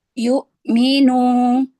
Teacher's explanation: Jangan terlalu lama menahan syiddah pada hamzah